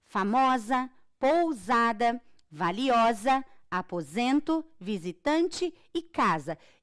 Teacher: eu não tenho o som do S eu tenho o s com o som de z